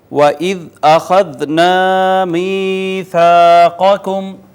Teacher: واو کو ہونٹ گول کر کے پڑھیں گے، ذال کو نرمی سے پڑھیں گے